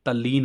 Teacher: लेकिन यहां पर ये रखना है आपको याद कि त वर्ग के बाद ल आने पर त वर्ग का लोप हो जाता है